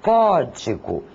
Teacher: A intensidade maior é dada na sílaba có. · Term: proparoxítonas